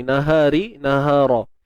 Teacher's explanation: Ra tebal baris atas.